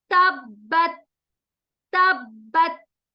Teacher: ता पर सुकून आ रहा है, आवाज को हमें हिलने नहीं देंगे, खलखला नहीं होगा, क्योंकि हमने पढ़ा था खलखला सिर्फ 5 लेटर्स पर जब सुकून की निशानी आएगी तो वहां खलखला करेंगे।